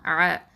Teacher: ஐன் வந்து வசத்தல் ஹல்கு, நடுத்தொண்டையிலேருந்து வரணும்.